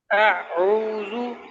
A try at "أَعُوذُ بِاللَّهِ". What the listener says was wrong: یہ آپ پہ جھٹکا نہیں دینا. اعوذ.